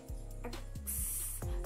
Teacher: Huruf X dilafalkan dengan cara ketika suara dikeluarkan, dia akan tertahan di tenggorokan